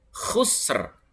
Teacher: ini bukan ha ya, tapi kho. Kho itu harus apa? Kayak seperti orang ngorok itu